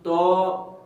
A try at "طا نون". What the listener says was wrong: دیکھیں تو پورا ایک الف لمبا کریں، طا نون، اور ہونٹوں کو اس طرح گول نہیں کرنا، ہونٹ ہلکی سے صرف کھولنے ہیں، طا نون،